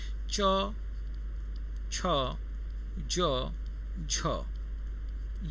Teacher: च वर्ग पूरा स्पर्श संघर्षी है।